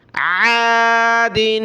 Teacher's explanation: عین کو اپنے مخرج یعنی گلے سے نکالنا ہے